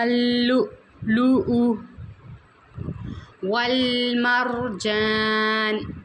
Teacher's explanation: یخرج منہما اللؤلؤ والمرجان، یہاں پہ بھی ہم نے الف مدہ کو ادا کرنا ہے، اور لام جو ہے اسے باریک کر کے پڑھیں گے